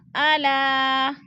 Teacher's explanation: حروف مدہ کے بعد حمزہ دوسرے کلمے میں ہے تو مد منفصل، 4 الفی مد ہے، 4 الف کے برابر ہم نے اس کو کھینچ کر پڑھنا ہے۔